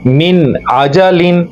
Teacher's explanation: हम इसको यूं नहीं पढ़ेंगे मिन आजालिन, नहीं, हम गुना नहीं करेंगे बल्कि हम नून पूरा अदा करेंगे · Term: इजहार